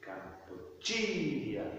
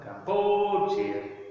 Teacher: The third syllable is stressed. If you try to stress the second one, Kampuchiya, it sounds wrong.